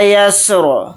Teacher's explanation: یا کو سین ساکن کے ساتھ ملا کر پڑھیں گے، را کو ساکن کر کے پڑھیں گے حالت وقف میں